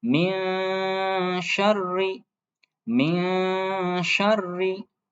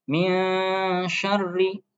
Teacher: Baik, selanjutnya yaitu ada nun sukun bertemu shin ya. Nun sukun bertemu shin. Nah, ini bacanya disamarkan ya atau didengungkan. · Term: ikhfa hakiki